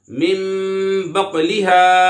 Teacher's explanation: यहाँ पर इकलाब हो रहा है और क़ाफ में कलकला होगा।